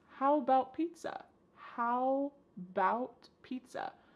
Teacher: The first A in the word about is gone. It's just missing. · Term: reduction